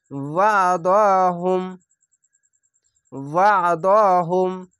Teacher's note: আইনটিকে গলা চিপে মোটা করে পড়বেন